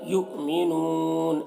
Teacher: یہاں پر زیادہ کھینچ کر رکیں گے اور منون پڑھیں گے، نون کا جو زبر ہے وہ سکون سے بدل جائے گا